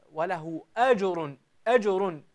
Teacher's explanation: أجر الجيم هنا قلقلتها صغرى لأنها وردت في ثنايا الكلمة